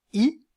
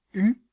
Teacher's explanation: labial cela dépend de la forme des lèvres arrondies ou étiré dans le cas du I par exemple les lèvres sont étirées dans le cas du U elles sont arrondies